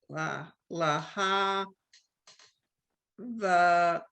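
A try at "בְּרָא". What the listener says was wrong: It's a B sound. B-ra, because it's a dot on the bottom. Laha, B-ra.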